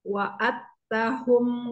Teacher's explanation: Dalnya kalah, Karena ada tasdidnya di tak.